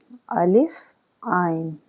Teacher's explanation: حلق سے اٹکتی آواز عین کی آتی ہے